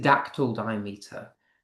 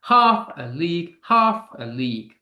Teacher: Yes, it is dactyl diameter. There is three syllables. Stressed, unstressed, unstressed.